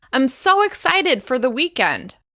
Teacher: the contraction I'm disappears in order to emphasize the key words of the sentence